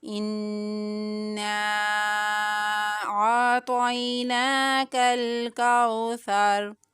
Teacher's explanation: حمزہ کو نون مشدد کے ساتھ ملائیں گے، نون کی ادائیگی 2 مرتبہ کریں گے، اور یہاں پر نون کے اندر غنہ کرتے ہوئے اس کی ادائیگی کریں گے۔